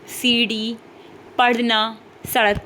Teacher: जैसे कोई वर्ण हमने बोला, कोई हमने शब्द बोला, फिर क्या हुआ, एकदम हमने जीभ को सिकोड़ा मुंह के अंदर, फिर एकदम से दूसरे भाग की ओर जोर से फेंका जीभ को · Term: उत्क्षिप्त व्यंजन